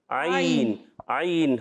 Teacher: عین کی ادائیگی حلق کے درمیان والے حصے سے ہوتی ہے